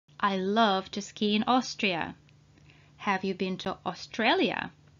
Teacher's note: a and u together at the beginning of the word are pronounced as o